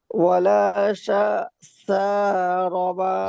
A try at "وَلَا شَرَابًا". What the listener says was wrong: শা টান হবে না।